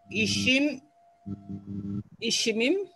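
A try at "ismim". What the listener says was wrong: Так, это не ищ, это ис.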